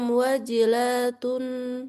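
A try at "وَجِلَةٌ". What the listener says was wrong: Lnya juga enggak panjang.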